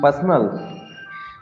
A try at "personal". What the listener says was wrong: Not personal, personal. We say personal. personal, personal. We don't say per. We don't say the R sound very stressfully.